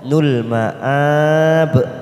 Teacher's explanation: ujungnya kita pantulkan karena ada huruf ba namanya qalqalah kubra